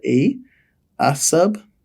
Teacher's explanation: It has a short vowel sound in front that we normally de-stress